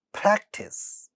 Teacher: pa at the initial position of the stressed syllable, hence aspirated, ta initial position of this syllable, but not the stressed one, hence not aspirated